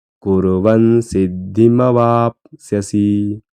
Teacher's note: कुर्वन सिद्धी मवापस्यसी कुर्वन सिद्धी वापसी यामध्ये दीर्घ स्वर कुठलाही नाही फक्त व ला एक काना असल्यामुळे वा हे थोडं दीर्घ म्हणायचं